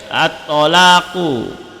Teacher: At-tolaku, qalqalah sughra tak ada, ta ni adalah bersabdu, bukan mati.